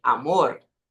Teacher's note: Aqui no final da sílaba também é interessante perceber que é amor. Amor tem uma vibraçãozinha no final.